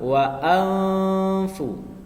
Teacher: Suara nun matinya itu tidak jelas dan juga tidak hilang. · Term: ikhfa